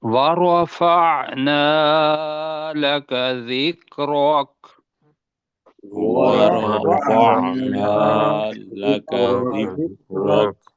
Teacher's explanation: پہلے ہوگا نا وا تو را موٹا نکلے گا